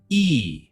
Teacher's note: Smile widely, show your teeth, stretch your lips to the sides. Make a long E sound. The sound is longer than short E. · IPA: /iː/